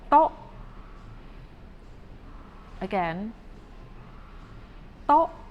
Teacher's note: It is not the T sound or the D sound, but it's in between T and D. To make this sound, you have to put or place your tip of your tongue right behind your teeth right here.